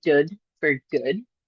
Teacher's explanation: If we were doing a g, the g fronted would be a d for that. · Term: fronting